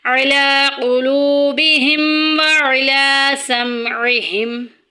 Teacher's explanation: وعلی مد منفصل آ گئی ہے، اس کو بھی 2.5 الف کی مقدار کے برابر ہم لمبا کریں گے